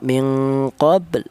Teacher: Kemudian minqob di sini ada huruf qalqalah huruf ba yang mati ini dibaca qalqalah atau ada suara pantulan